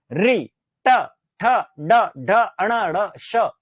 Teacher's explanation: इन सब का उच्चारण मूर्धा से होता है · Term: मूर्धन्य